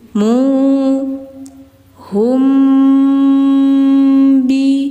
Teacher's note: mimnya ditahan dulu teman-teman karena setelahnya ada ba setiap ada mim sukun ketemu ba maka harus didengungkan dulu si mimnya hukumnya ikhfa syafawi Hum biid id mengalir, Teman-teman.